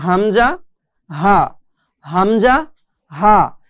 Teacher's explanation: কন্ঠনালীর শুরু হতে এই দুইটি হরফ এখানে দুইটি হরফ দেওয়া আছে এই হরফগুলো পড়তে হয় একটা হচ্ছে হামজা হামজা হা একদম শুরু হতে কন্ঠনালীর শুরু হতে আমাদেরকে এই দুইটি হরফ উচ্চারণ করতে হবে